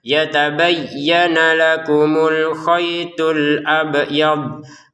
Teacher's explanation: Huruf bnya saja yang dipantulkan ya. Huruf dnya jangan. Jadi kita bacanya itu alabyad itu huruf dadnya jangan dipantulkan.